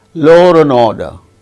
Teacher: in connected speech in such cases ra intrudes when a word ends with a vowel sound